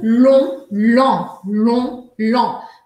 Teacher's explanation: Essa imagem não está uma qualidade ótima, peguei na internet mesmo, mas é só para mostrar para vocês que o que acontece, por que chamam sons nasais? É porque a gente vai precisar fazer o ar sair ao mesmo tempo pela boca e pelo nariz